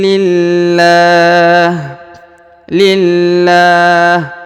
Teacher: huruf lam ya, yang di sini terdapat 2 tanda tasdid sehingga harus ditahan dan ditekan